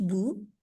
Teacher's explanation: الٹی پیش کے لیے بھی ہونٹ آپ کے گول ہوں گے، تھوڑا سا بیچ میں سوراخ رہ جائے گا، اور جیسے ہوا اور آواز باہر آئے گی سانس بھی باہر آئے گی۔